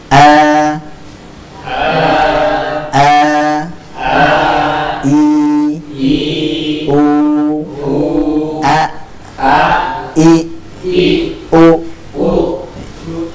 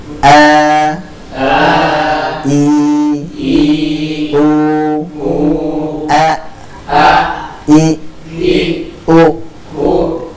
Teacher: Hamzah keluar dari tenggorokan bagian bawah. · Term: huruf hamzah